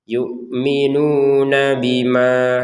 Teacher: dia ada dhammah bertemu wawu dipanjangkan 2 harokat